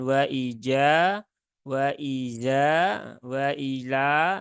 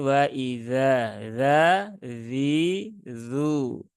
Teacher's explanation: huruf zal dia keluar dari ujung lidah gigi seri atas